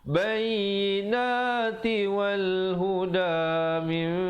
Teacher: Bayyinati wal huda min iqlab di situ nun mati bertemu ba. Nun bunyi nun ditukarkan kepada bunyi mim yang nipis 2 harakat.